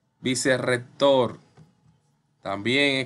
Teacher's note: entre dos vocales y suena como una biblia vibrante múltiple vicerrector vicerrector también con doble r porque está entre dos vocales y suena vibrante múltiple